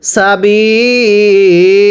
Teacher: ওয়াকফের সময় দুই জবরের পরে খালি আলিফ থাকলে এক জবরকে বাদ দিয়ে আরেক জবরে এক আলিফ টেনে পড়তে হয়